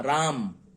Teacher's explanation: मौ में जाकर के मुंह बंद हो जाता है, यानी ओठ बंद हो जाता है। मौ का पूरा उच्चारण हम नहीं करते हैं।